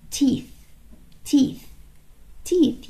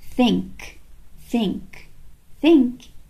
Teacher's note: الصوت بقى التاني اللي هو unvoiced، يعني مفهوش vibration، مفهوش اهتزاز لما نحط ايدينا على زورنا